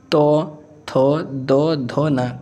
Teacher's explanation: दंत व्यंजन एकदम सिंपल है, ऐसा व्यंजन जिसको बोलने पर हमारी जीवा दांत से छूती हुई जाती है